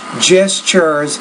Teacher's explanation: the TU is typically pronounced as a CH if the TU is in the middle of the word